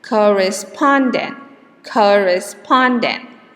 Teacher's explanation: the primary stress is in the pon